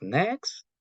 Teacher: All these sounds, nasal sounds, are voiced because the vocal cords vibrate throughout.